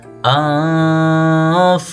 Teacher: Jadi antara nun dan fa nya sama-sama ya. Nunnya seakan-akan masuk ke fa. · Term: ikhfa